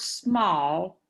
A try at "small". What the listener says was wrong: just say small. Don't say it's small. It sounds like you put an E in front of the S's, like Espanol. Instead of, you just say small, not small.